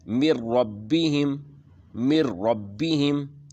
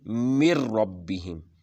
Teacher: تو پھر بغیر غنہ کے آگے ملا کے پڑھیں گے، بغیر غنہ کے ملا کے پڑھیں گے۔ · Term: ادغام بلا غنہ